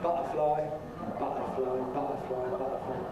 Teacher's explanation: Can you make a glottal stop [ʔ ʔ ʔ ʔ ʔ], not using the tongue tip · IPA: [ˈbʌʔəflɑɪ]